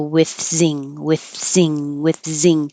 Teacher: so you can keep your airf flow going with zing and as you pull your tongue in from the th you're making the Z